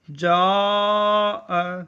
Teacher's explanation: جاء میں الف مدہ ہے، اس کے بعد اسی کلمے میں حمزہ آ رہا ہے تو یہ مد متصل ہے، یعنی اسے ہم کھینچ کر اور دراز کر کے پڑھیں گے